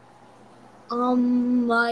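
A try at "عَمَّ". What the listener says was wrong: Word by word. Don't rush it. First of all, apply gunna on me properly.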